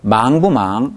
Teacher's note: 이때 부는 뿌 아니고 부로 납니다. 왜냐하면 이렇게 선택형 의문문이 되면 뿌는 당연히 나오는 걸 알기 때문에 아주 약화됩니다.